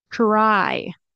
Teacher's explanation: everyone does this but it's very common in casual natural speech it might most likely will be pronounced as a CH sound and a r sound